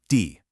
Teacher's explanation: First, you have D, a quick falling fourth tone, D.